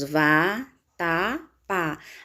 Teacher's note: Separando as sílabas da palavra vatapá, nós temos vá, tá, pá. A sílaba mais forte é o pá.